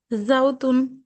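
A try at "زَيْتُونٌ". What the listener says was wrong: জাইতুন। জাই জাই। উচ্চারণটা, সরি বলছি, জাল উচ্চারণটা আরো পাতলা করতে হবে।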